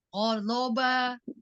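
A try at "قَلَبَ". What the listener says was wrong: Bo, bukan zo. Ujung lidahnya jangan keluar. Sisi lidahnya ada di gigi geraham atas. Bo.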